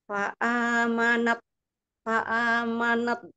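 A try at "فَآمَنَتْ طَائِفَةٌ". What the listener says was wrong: Ibu, berasa nggak huruf nunnya jadi pendek? Manet gitu. Manet, saya tuh dengarnya manet, bukan manet. Manet. Nap to, nap to. Jadi ibu masih sibuk dengan ini pergerakan rahang, ya. Nun, to, ya itu nggak melibatkan rahang. Na, to, na, to, na, to, na, to, gitu.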